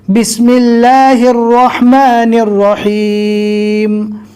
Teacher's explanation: آپ دیکھ سکتے ہیں یہ چھوٹی ہا ہے اللہ میں جو ہے وہ، اور اس کے بعد یہ 2 بڑی ہا ہے۔ ہا کو حلق سے ادا کرنا ہے اور اللہ کے جو ہا ہے اس کو نارمل پڑھنا ہے۔